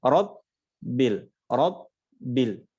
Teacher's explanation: karena huruf ba ini bukan rakhawah, maka dia tidak boleh kita ucapkan dengan mengalir, mungkin tanpa sadar karena ini masuknya kesalahan yang samar ya. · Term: tasydid